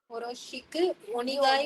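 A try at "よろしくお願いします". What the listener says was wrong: யோடா இருங்க. நீங்க வந்து இங்க இங்கிலீஷோட இந்த இங்கிலீஷ் லெட்டர்ஸோட அந்த வேர்ட்ஸை பாருங்க. யோ ஃபர்ஸ்ட் லெட்டர் வந்து யோ. எப்படி ப்ரொனவுன்ஸ் பண்ணணும் அதே மாதிரி தான் ப்ரொனவுன்ஸ் பண்ணணும். யோரோஷிக்கு யோரோஷிக்கு யோரோஷிக்கு. டோசோ யோரோஷிக்கு ஒனே. இது நீன்னு சொல்லக்கூடாது, நே. ஒனேகாய் ஷிமாஸ். ஒனேகாய் ஷிமாஸ். ஒனேகாய் ஷிமாஸ்.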